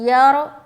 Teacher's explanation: रा को मोटा रखना है क्योंकि राय साकिना से पहले क्या है, ज़बर है